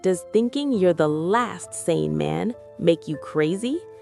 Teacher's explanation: Notice the rising intonation on crazy.